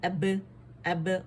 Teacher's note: اب باریک قلقلہ, حمزہ کو باریک ہی رکھیں گے, اب کر کے نہیں پڑھیں گے, ٹھیک ہے.